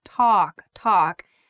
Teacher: talk should be a very open a sound